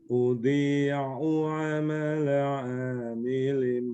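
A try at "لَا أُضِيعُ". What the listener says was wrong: Nggak boleh dari udhi'u, itu kan ada la-nya Pak. La udhi'u.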